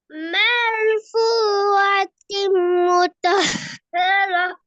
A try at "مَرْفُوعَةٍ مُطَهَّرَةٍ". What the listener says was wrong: முத்தஹராண்டா அப்ப என்னது இல்ல சின்னத்தையா ஓதுறீங்க பாருங்க. முத்தஹரா முத்தே தான் வருது. வாய் ஃபுல்லா அடுக்கணும்.